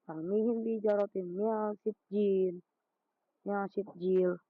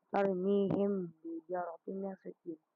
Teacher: Cara baca ikhfa syafawi ya, ini menyamarkan huruf mimnya. Huruf mim itu disamarkan di bibir dan didengungkan.